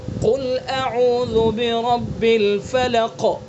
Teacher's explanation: جیسے عام طور سے پڑھتے ہیں قل اعوذ برب الفلق، پتہ ہی نہیں لگتا ہے. تو قاف کو پر بھی کریں گے اور قاف کے اندر قلقلہ بھی کریں گے